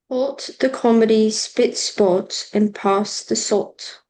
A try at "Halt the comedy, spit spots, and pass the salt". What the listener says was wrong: Good job. Very good. I thought that was lovely.